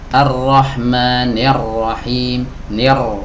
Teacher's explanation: Memang ra-nya tebal tapi kasrahnya menjadi tidak sempurna.